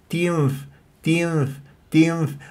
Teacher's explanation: باطن الشفا السفلى مع الثنايا العليا من غير اطباق للشفاه